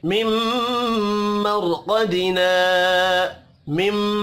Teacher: मीम मुशद्दद पर गुन्ना होगा। मर रा साकिन से पिछले हर्फ के ऊपर जबर है, रा को पुर पढ़ेंगे।